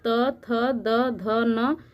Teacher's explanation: इसको दंत ध्वनि कहते हैं, क्योंकि ये हमारे दांत के स्पर्श से बोली जाती हैं